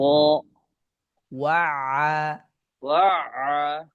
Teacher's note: আইনে বেশি প্রেসার করা যাবে না মাঝামাঝি রাখতে হবে